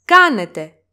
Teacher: The last word of this sentence is κάνετε. It has three syllables and the accent goes on the first syllable or the third syllable from the last.